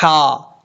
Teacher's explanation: والی ہا، تو ایسا نہیں کرنا، یہ ہا بریک ہے، ہا، اس ہا کا تعلق ہے گلے کے ساتھ، جو گلے کے درمیان میں حلق ہے اس حلق سے یہ ہا ادا ہوتا ہے